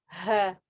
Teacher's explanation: Ha di mana? Di pangkal tenggorokan.